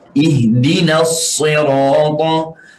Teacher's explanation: sad walaupun berbaris bawah tetapi tetap tebal sebab ada sifatul isti'la dan al-itbaq. Bila ada sifat al-itbaq ini harus kita tetap tebalkan walaupun berbaris bawah.